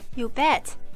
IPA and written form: ju: bєt (ou bet!)